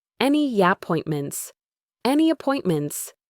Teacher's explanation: The Y sound at the end of any can link to appointments.